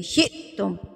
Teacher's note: هَذِهِ الْقَرْيَةَ فَكُلُوا مِنْهَا حَيْثُ شِئْتُمْ، یہاں پر ہم جھٹکا دیں گے کیونکہ حمزہ کے اوپر جزم ہے، سکون کی حالت ہے، تو حمزہ سکون کی حالت میں ہوگا تو اس کو ہم جھٹکا دے کے پڑھیں گے